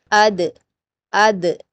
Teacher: اس کا مخرج بھی آپ اسی طرح پتہ لگا سکتے ہیں، حمزہ پر حرکت کے ساتھ اور دال پر جزم کے ساتھ، اد اد، جہاں پر د کہتے ہوئے لاسٹ میں آپ کی ٹنگ کی جو ٹپ ہے اوپر کے 2 دانتوں کی جڑوں سے، وہی اس کا مخرج ہے، دال دال دال۔